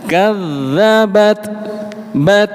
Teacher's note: Ketika ada tak sukun dihameskan.